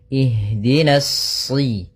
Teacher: pada lafal ha, usahakan di sini mengalir nafasnya dan lembut. Ada namanya jaroyanu an-nafas.